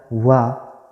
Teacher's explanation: दंतोष्ठ, दांत और ओष्ठ दोनों से होता है वा का उच्चारण